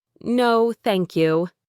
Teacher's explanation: her intonation was flat, almost like she was stating a firm refusal rather than a gentle decline